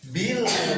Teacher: tipis ke lafaz lah sambil ditekan karena ada tasdid ya. Setiap ada tasdid harus ditekan.